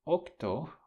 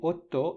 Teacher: octo became Otto in Italian okay so what kind of assimilation is that it is regressive